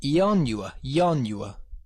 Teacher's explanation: It's only a small step from saying the 4-syllable ianua to saying the 3-syllable yanua.